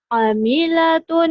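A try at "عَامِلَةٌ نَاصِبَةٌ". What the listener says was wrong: A-nya panjang. Amilatun nasibah.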